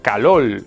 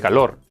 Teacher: Intercambiar la R por la L es un fenómeno fonético, el lambdacismo. Que consiste en pronunciar la letra L cuando hay una R, generalmente al final de una sílaba.